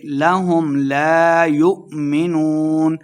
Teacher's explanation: حمزہ ساکن کو جھٹکے کے ساتھ پڑھیں گے ، یؤمنون واو مد 2 حرکات لمبا کریں گے، اور آخر